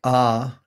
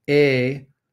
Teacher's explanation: aa is a low back vowel and a is a mid front vowel